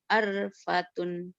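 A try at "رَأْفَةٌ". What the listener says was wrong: arpatun salah arpatun terbalik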